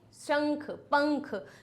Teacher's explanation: ये जो अनुस्वार होता है वो इंगा में परिवर्तित होता है